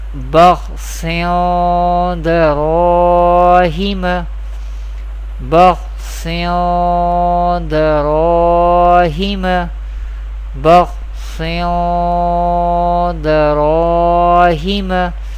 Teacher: Here we perform gunna on Ikhfa letter. We take our sound into the nose and we perform gunna or nasalization. The duration of gunna or nasalization is equal to 1 alif.